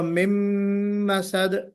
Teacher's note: नून साकिन मीम में मिल जाएगा तो इदगाम होगा, इदगाम बिल गुन्ना